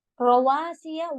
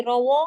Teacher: وا ہوٹ گول کر کے پڑھیں گی